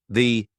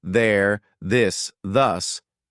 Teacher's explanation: For example, the th sound. Your tongue has to come through your teeth.